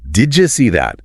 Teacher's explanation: Your brain is anticipating the Y in you while still pronouncing the D. And the friction creates that J sound. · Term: alveolar assimilation